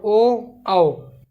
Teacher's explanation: कंठ से और ओष्ठ से, कंठोष्ठ, कंठोष्ठ, कंठोष्ठ से आ रही है।